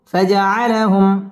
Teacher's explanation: মিম সেকিন ইজহারে খাস গুন্না ছাড়া পড়তে হবে